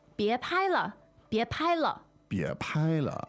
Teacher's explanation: Now, the tones are 别 second，拍 first，别拍了。